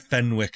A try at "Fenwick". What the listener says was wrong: you don't pronounce the W.